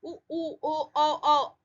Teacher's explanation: उ ओ हमारा माउथ जो है सुकड़ के आ रहा है, होठ गोल हो जा रहे हैं। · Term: वर्तुल